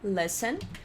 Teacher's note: A gente não pronuncia o T do listen